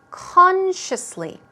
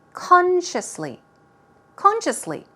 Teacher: Stress goes right there on the first syllable.